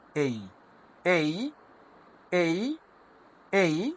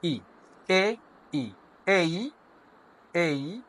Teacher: এ ই মিলে এই এই শেষে একটা শর্ট ই সাউন্ড আছে